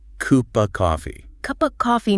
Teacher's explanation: The F in of links to the C in coffee. And in rapid natural speech, the vowel in of actually reduces to a neutral schwa sound. Just a little sound.